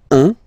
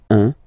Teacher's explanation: when you combine this u and n, you get the nasal sound un